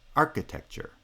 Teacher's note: this time primary stress is on the first syllable because it's the strong syllable in the strong foot, which is now the first foot.